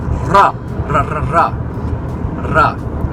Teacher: There's a ra in Spanish, but it's the ra where you roll your r's.